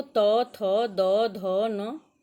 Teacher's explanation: त वर्ग देखो त, थ, द, ध, न, इसका उच्चारण स्थान दंत है